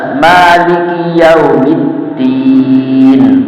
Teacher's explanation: dalnya ujung lidah nempel langit-langit mendekati gigi seri atas